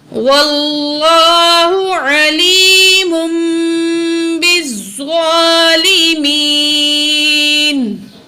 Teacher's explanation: تو یہاں جو ہے دیکھیں تنوین کے بعد با آ رہی ہے، تو ہم تنوین کی آواز کو میم سے بدل کے پڑھیں گے. یہاں پہ اقلاب ہوگا، اقلاب کا قاعدہ لگے گا، ٹھیک ہے.